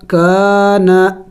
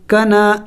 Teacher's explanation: زبر کا، نون الف زبر نا، کانا، کنا نہیں پڑھیں گے، دونوں الف مدہ ہے، الف سے پہلے جب زبر ہو تو اسے الف مدہ کہتے ہیں، تو یہاں پہ دونوں الف مدہ ہے، دونوں کو ایک الف کے مقدار کھینچیں گے